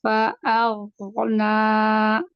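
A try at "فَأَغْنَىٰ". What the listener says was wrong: Masih kepanjangan. dua aja. Dua harokat aja.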